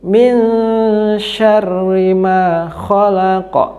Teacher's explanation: Ikhfa hakiki, yaitu nun mati bertemu huruf shin. Cara membacanya samar dan mendengung selama 1,5 alif atau 2 harokat. Min syarri ma, shin dibaca tebal.